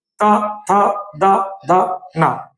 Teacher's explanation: त वर्ग में जीभ दांतों में टच होगी। यानी दंत से बोला जाता है।